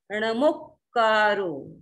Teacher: एसो पंच णमोक्कारो, णमोक्कारो, मो है, यद्यपि इसमें मात्रा दीर्घ है लेकिन पीछे दो का आगे, एक आधा क एक पूरा क है, तो ये संयुक्त अक्षर आ गया, इसलिए मो भी छोटा ही बोला जाएगा